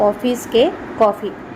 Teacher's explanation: હોઠ વચ્ચે અંતર વધુ રહે છે તેને વિવૃત્ત સ્વર કહે છે